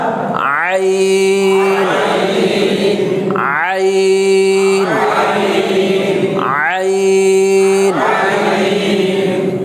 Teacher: আইনের উচ্চারণটা এই হলকের মধ্যখান থেকে